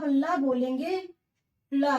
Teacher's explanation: वायु जीभ के पीछे से निकलेगी। इसमें हो जाएगा ला। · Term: पार्श्विक